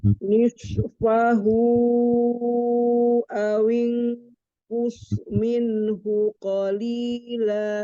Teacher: shadnya itu kan ada sifatnya as-Sofir ya, desisan